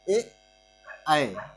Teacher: कंठ तालव्य यानी कंठ और तालु से जो उच्चारित होते हैं